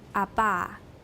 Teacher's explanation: start from a fully voiced plosive, say Abba, making sure that the voicing continues throughout the closure. Now say this sequence slowly, making the closure last as long as you can, while while maintaining strong vocal folds vibrations.